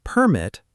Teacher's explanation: stress on the first part, is a noun